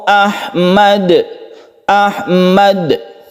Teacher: Ahmad ini adalah Qalqalah kubra karena berada di akhir kata dan ketika diwakafkan [Tertawa] Ahmad Ahmad sukun kan dan pantulkan [Tertawa] fajar kemudian adalah